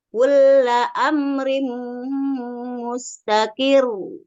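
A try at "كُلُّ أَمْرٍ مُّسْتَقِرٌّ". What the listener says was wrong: Jangan tebal. Mustaqir.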